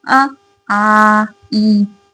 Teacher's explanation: इनके उच्चारण में हवा केवल मुंह से निकलती है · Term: मौखिक स्वर